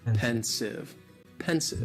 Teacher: just 2 syllables, and the stress is on that first syllable